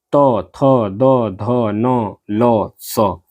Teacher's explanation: इसके बाद आता है आपका चौथा दंत्य वर्ण यानी कि जिनका उच्चारण दांत से होता है, यानी जिह्वा का अग्रभाग, यानी कि जिन वर्णों के उच्चारण में जिह्वा का अग्रभाग दंत से स्पर्श करता है यानी कि दांत से स्पर्श करता है वो दंत्य वर्ण कहलाते हैं